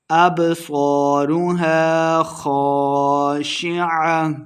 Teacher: ابصارها خاشعہ، اب صارها الف مد ہے، 2 حرکات لمبا کریں گے، صاد کو موٹا پڑھنا ہے، خاشعہ، خا کو بھی موٹا کر کے پڑھیں گے، اور آخر پہ ہم نے وقف کر دینا ہے۔